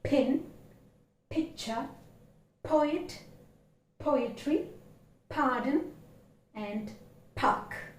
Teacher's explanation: See, remember, the first sound is not fully sounded as we articulated p, because this is a voiceless consonant which is articulated with more breath force, whereas b is uttered with lesser amount of breath force.